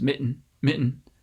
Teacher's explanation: to the roof of your mouth and mitten for that t you can just close off your vocal folds mitten mitten uh and make a stop of the airflow down here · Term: glottal stop